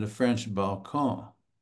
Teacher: the French nasalized the O